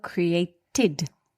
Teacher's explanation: The last sound in the verb create is T, a dental consonant